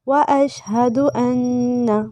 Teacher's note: نون پہ غنہ کریں گے لیکن کھینچنا نہیں ہے